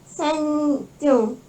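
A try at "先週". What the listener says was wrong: Senshu. Senshu. Jangan jadi J, kan nggak ada teng-teng ya, nggak ada. Nggak ada teng-tengnya, normal aja Senshu.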